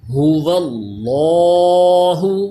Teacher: یہ لفظ اللہ کا نام بھی پر ہوگا کیونکہ واو کے اوپر زبر ہے۔ ہا کو حلق کے نیچے والے حصے سے ادا کیجئے، هو اللہ، یہ لام بھی پر ہوگا کیونکہ زبر ہے اس سے پہلے۔